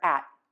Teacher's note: the air is just stopping. The tongue is staying in the same place behind those top front teeth. It's just not pulling down and the air is not puffing out.